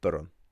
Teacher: what you often end up with to ease pronunciation is a tiny vowel that isn't written in between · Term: a little vowel sound